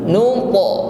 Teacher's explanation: Ada huruf ta sukun maka tampak sifat qalqalah, ada suara yang memantul. Nun ta. Namun sekali lagi bunyi pantulan huruf ta adalah tebal, ya, bukan min nud.